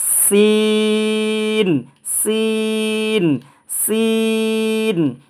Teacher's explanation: Tyre যখন puncture হয়, leak হয়, তখন একটা শেষের আওয়াজ বের হয়, এরকম আওয়াজে এই সিনটা উচ্চারণ করবেন। 3 আলিফ টেনে পড়বেন, সিন সিন সিন।